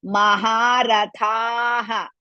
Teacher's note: ಥ it is also ದೀರ್ಘ and at the same time ಮಹಾಪ್ರಾಣ